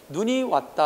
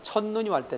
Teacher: 우리 국어는 첫 음절에서 길게 소리 나는 것이 원칙인데 둘째 음절 이하라고 하면 자동 짧은 소리 되는, 그래서 눈이 왔다 할 때 눈은 길기지만 첫눈이 왔을 때 첫눈은 짧게 발음한다는 사실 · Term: 장음